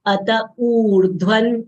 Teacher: Dha is mahapran letter. We should exhale while saying dha. It should not come out as the.